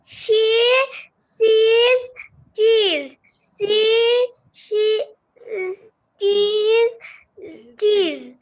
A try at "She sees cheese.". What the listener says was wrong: বাবা tongue twister হলো না, টাং টুইস্টার আরো তাড়াতাড়ি বলতে হবে।